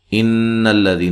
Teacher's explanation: ان الذین نون مشدد پہ غنہ ضروری ہے